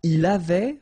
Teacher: Il avait, final T not pronounced.